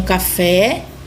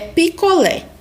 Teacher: toda oxítona ela tem que estar na última sílaba da palavra como a sílaba mais forte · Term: oxítonas